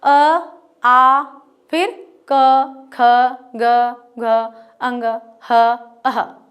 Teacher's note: कोई भी ना होठ टच हुए है, ना दांत टच हुए हैं, ना जीभ टच हुई है, ना तालू हुआ है, ना जीभ मुड़ी है, ना इधर गाल पे टच हुआ है, ना इधर टच हुआ है, कहीं पर भी कुछ नहीं हुआ है। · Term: कंठ से उच्चारित वर्ण